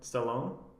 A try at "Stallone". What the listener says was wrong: You put a lot of A emphasis on it, but it's okay. I thought it was just Stallone. Are we saying the same thing? No, we're not. no, we're not. You're saying Stallone versus Stallone.